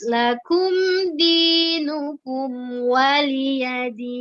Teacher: Mimnya jangan jadi seperti kol-kolah gitu maksudnya ya. Jadi harus jelas lakum dinukum waliyadin.